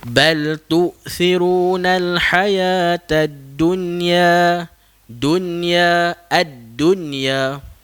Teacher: dengan menzahirkan dengan menjelaskan bunyi nun mati tersebut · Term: izhar mutlak